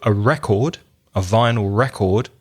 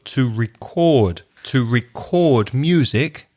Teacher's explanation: record notice the stress changes on the verb so a record a vinyl record stress the first syllable but the verb to record to record music stress the second syllable